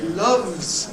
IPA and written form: lʌvz (loves)